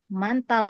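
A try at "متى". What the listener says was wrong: Mata, bukan manta. Mata.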